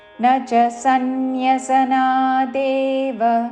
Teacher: సన్యసనా స పక్కన నకి న వత్తు య వత్తు సన్యసనా సన్యసనా దేవ చివరిలో వ రస్వము పొడిగించకూడదు